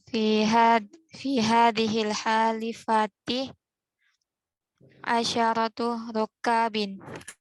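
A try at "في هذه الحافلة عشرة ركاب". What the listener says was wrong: Ini salah ya. Hafilah. Kok halifah? Bacanya salah. Hafilah ya. Fi hadhil hafilati.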